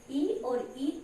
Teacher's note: ई और ई तालव्य वर्ण है, इनको तालु की सहायता से बोले जाते हैं।